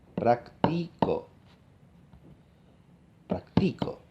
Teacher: es la que carga con el tono alto verdad digo práctico la nota más aguda está en el medio